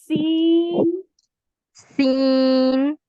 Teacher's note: सीन में सीटी की आवाज जो है ना वो प्रोमिनेंट होनी चाहिए।